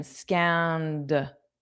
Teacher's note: it wasn't the easiest to hear that ED because it's just a soft D